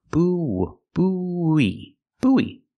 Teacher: Together, we link the sounds with the ww sound. · Make the long oo like food and moon, boo, and then have the long e like green beans, e. Together we link the sounds with the w sound.